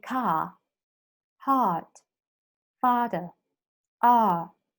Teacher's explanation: When you go to this one, open central unrounded vowel